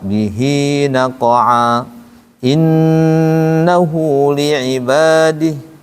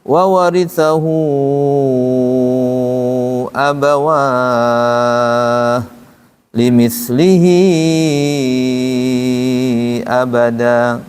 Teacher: Tapi kalau mad silah kubro, wa warithahu abawah limislihi abada, ini panjang. Karena penyebab panjangnya ada hamzah